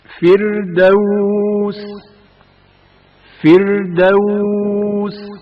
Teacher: را سے پہلے زیر ہے، جس کی وجہ سے را باریک پڑھا جائے گا۔ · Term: ترقیق